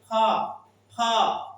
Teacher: फ बोलने से क्या लगता है कि हमारा ये जो दोनों ओठ है दोनों ओष्ठ है वो दोनों स्पर्श हो रहा है। दोनों छो रहा है।